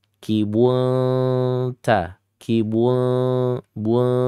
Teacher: Ikhfa yang dekat hampir n tapi tidak n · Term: ikhfa aqrab